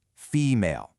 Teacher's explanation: Primary accent, sure, but that second syllable stays somewhat prominent because of the full vowel.